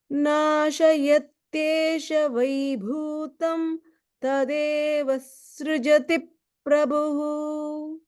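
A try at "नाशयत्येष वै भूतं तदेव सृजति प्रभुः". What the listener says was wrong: The only thing is in the word nasha yat yesha, I didn't fully hear the ye in yat yesha. So you can just work a little bit on pronouncing that more clearly.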